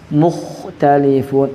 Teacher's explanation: huruf kha itu tidak boleh seakan-akan kayak orang ngorok.